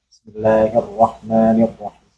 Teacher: ada getarannya dan getaran pun tidak berlebihan seperti kita mengucapkan huruf r dalam bahasa Indonesia